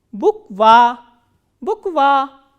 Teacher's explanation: So, again there are 2 vowels, u and a, and this a is stressed and u is unstressed